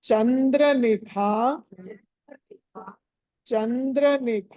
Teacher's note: చంద్ర నిభా అక్కడ భ అన్నది మహాప్రాణం ఒత్తి పలకాలి